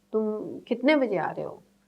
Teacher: getting the maximum pitch, could be, rising in the middle and then coming down